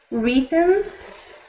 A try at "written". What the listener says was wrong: So that is not E, that is an I sound. So written.